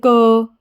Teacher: उन्हें क्या कहते हैं व्यंजन कहते हैं ठीक है जैसे क क को हमने बोला तो उसमें अ की धवनी हमें सुनाई दे रही है